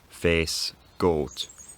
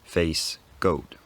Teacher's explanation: The first difference was the fact that the vowels in words like face and goat at some point went from monophthongs, face, goat, to diphthongs